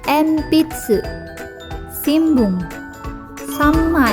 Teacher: Senki mangga pada kosakata yang berarti pensil koran dan tiga lembar bunyi n bertemu bunyi p b dan M maka bunyi n berubah menjadi Bunyi m